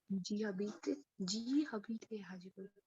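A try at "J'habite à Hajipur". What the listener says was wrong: Hajipur. In French, there is no her sound. So we will not say Habit. We will just say Abit. And when you say it with Ja, it is Jabit.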